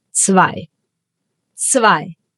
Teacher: The German Z is called Z because you read it as an ts.